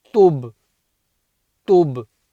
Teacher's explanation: There's a Kalkala on the Ba as well